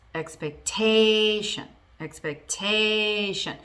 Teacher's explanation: The stress moves from the second syllable of the word to the third, which is the second to last in that word.